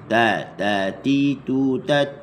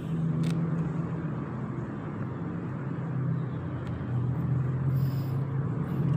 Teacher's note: Bukan di belakang gigi atas, tapi di gusi pangkal gigi tu. Letak dekat situ, tempat tumbuh gigi tu.